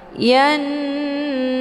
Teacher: Ya-nya dileburkan ke dalam huruf nun dengan cara ditekan kemudian ditahan lebih kurang 2 kali ketukan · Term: ghunnah musyaddadah